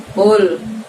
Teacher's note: Jadi walaupun di situ harokatnya doma, bibir kita tidak perlu maju ke depan karena dia menggunakan pangkal lidah kita